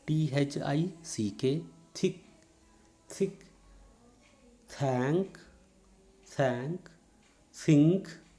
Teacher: dental voiceless fricative, dental voiceless fricative